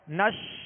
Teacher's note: آواز شین کو ادا کرتے ہوئے منہ میں پھیل جائے گی مگر اس میں بھی قلقلہ نہ ہو